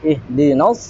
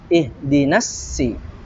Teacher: huruf shad itu dia memiliki sifat isti'ala ya. Pangkal lidah dia naik ke langit-langit ya, langit-langit mulut.